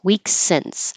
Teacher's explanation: So only one S, weeks since.